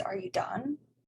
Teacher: The tonic syllable is the last word done.